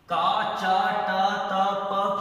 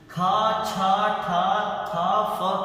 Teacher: का चा टा ता प क्या है, सभी अल्प प्राण है। खा छा ठा था फ क्या है, महाप्राण है।